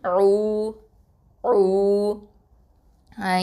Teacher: இந்த ஐன் வந்து நடுத்தொண்டையிலேருந்து வரணும், வசத்தல் ஹல்க்கு.